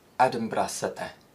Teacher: The I sound is used at the end of words containing the Y suffix, and it's more open compared to received pronunciation, as is the E sound.